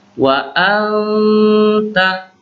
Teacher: Di sini anta, perhatikan kalimat anta, di sini ada nun sukun, nun mati bertemu ta. Ini ta ini salah satu huruf ikhfa, jadi dibaca ikhfa, samar-samar nunnya.